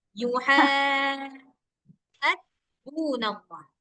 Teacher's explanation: panjangkan haknya itu 6 harkat. Sama haknya itu kurang masuk ke tengah dia itu.